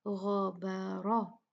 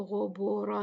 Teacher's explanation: غین ہے اس کو ہیوی پڑھنا ہے، با بیچ میں لائٹ ہے، را پھر ہیوی ہے